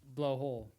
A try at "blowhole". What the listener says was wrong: You put the wrong emphasis on it, buddy. Blow hole.